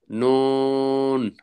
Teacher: জিহ্বার আগা তার বরাবর উপরের তালুর সঙ্গে লাগাইয়া